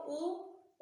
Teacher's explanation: उ बोला तब होठ गोल हुए, ऊपर नीचे नहीं भिड़े